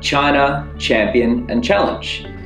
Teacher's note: it's a short sound and we don't use our voices we make it by tapping our tongue on the reach behind